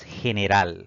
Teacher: La mayor fuerza de voz al pronunciar esta palabra recae en la última sílaba contando de derecha a izquierda